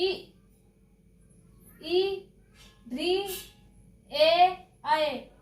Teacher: अग्र स्वर वाले जीभ के अगले भाग से बोले जाते हैं